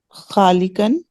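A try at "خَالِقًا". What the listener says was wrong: Very good.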